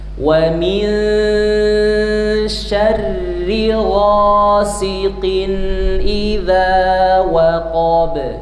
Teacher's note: Wa mil syarri, ujung lidahnya menyentuh gusi atas, pangkal lidahnya diturunkan. Jadi tidak ada efek ketebalan pada hurufnya. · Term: tarkik